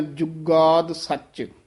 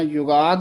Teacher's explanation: ਜੁਗਾਦ ਪਦ ਵੀ ਥੋੜਾ ਜਿਹਾ ਕਸ ਕੇ ਉਚਾਰਨ ਕਰਨਾ ਹੈ ਔਰ ਜੱਜਾ ਸ਼ੁੱਧ ਬੋਲਣਾ ਹੈ, ਯੁਗਾਦ ਨਹੀਂ ਕਹਿ ਦੇਣਾ। ਕਈ ਯਈਆ ਹੀ ਲਾ ਦਿੰਦੇ ਹਨ, ਇਸ ਨੂੰ ਥੋੜਾ ਜਿਹਾ ਕਸ ਕੇ ਬੋਲਣਾ ਹੈ, ਜੁਗਾਦ ਸੱਚ।